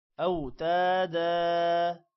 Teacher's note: اوتادا، تا کے بعد بھی الف ہے، اس کو بھی لمبا کریں گے۔ دا یہاں پر بھی مہادا کی طرح لمبا ہوگا۔